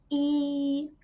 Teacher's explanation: a close front vowel sound articulated in the front part of the vocal tract